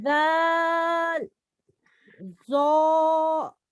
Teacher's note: پہلا ہمیشہ باریک اور دوسرا ہمیشہ پر ہے کیونکہ یہ حروف مستعلیہ میں 7ویں نمبر پر آتا ہے جس کا مجموعہ خصہ ضغط قذ ہے. · जुबान की नोक और सनाया उलिया का किनारा मखरज नंबर 1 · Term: پر باریک